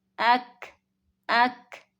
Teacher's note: ایک بات نوٹ کر لیں کہ ان حروف میں تا اور کاف کو خوب واضح کر کے پڑھنا ہے، خاص کر جب ان پر سکون ہو، جیسے قالت، لت، كانت، أكبر، أهلكنا۔ تا میں تھوڑی سی تھا کی اور کاف میں تھوڑی سی کھا کی آواز آئے گی، لائٹ سے تھا اور کھا کی آواز، تا میں تا اور کھا میں کھا کی آواز۔